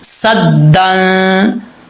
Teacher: تنوین کے بعد جو حروف اخفا میں سے کوئی حرف آ جائے تو غنہ ہوتا ہے، ایک الف کی مقدار غنہ کریں گے. صدن، سین زبر دال، صد دال دو زبر دن، صدن. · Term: اخفا کا غنہ